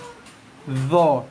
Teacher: Lidah keluar kena gigi atas ni. Okey, macam ni Gigi tajam atas ni kena hujung atas lidah kita.